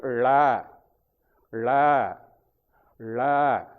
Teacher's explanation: அந்த நாக்கு உள்ள சுழிந்து போயி அந்த அன்னத்தினுடைய கடைசி பகுதியை போய் வருடனும் முன்பகுதி பல்லை ஒட்டி இருக்கு கடைசி பகுதி தொண்டையை ஒட்டி இருக்கு அங்க போய்